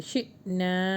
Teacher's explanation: حمزہ کے اوپر جزم ہے تو جھٹکا دیں گے